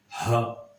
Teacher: ہا کو ہم نے سیکھا تھا کہ جو سینے کی طرف حلق کا حصہ ہے وہاں سے ادا کیا جائے گا